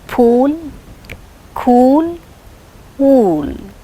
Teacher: So it is back close rounded vowel, lips are rounded.